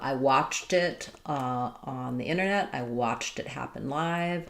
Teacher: when we link a t to a vowel, it turns back into a flap. So watched it is really going to sound the same as watch it.